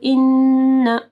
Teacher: نون مشدد ہے, اِنَّا نہیں پڑھنا. اِنَّ کو اگر ساتھ میں الف مدہ نہیں ہے تو اِنَّا نہیں پڑھنا.